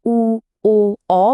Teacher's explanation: উ, ও, অ বলার সময় ঠোঁটটা কেমন গোল হয়ে যাচ্ছে, অনেকটা কুঁচকে যাওয়ার মতো, এগুলোই হলো কুঞ্চিত স্বরধ্বনি।